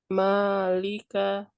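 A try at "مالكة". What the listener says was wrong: Jangan diayun. Malika coba. Malika. Jadi kalau yang tidak ada kaidahnya di ayun jangan ya.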